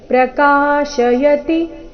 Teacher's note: ಪ್ರಕಾಶಯತಿ ಕಾ ಮಾತ್ರ ದೀರ್ಘ ಈ ಶಬ್ದದಲ್ಲಿ.